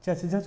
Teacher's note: च वर्ग के उच्चारण स्थान में वायु जो है कुछ घर्षण के साथ निकलती है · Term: स्पर्श संघर्षी